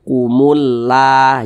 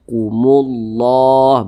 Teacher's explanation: maka lafaz Allah dibaca tebal maka dibaca Kumullah Jangan dibaca kumulla jangan tapi ditebalkan Kumullah begitu kemudian di sini